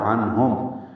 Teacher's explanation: نون ساکن پہ اظہار، میم ساکن پہ اظہار شفوی، ہونٹوں میں اظہار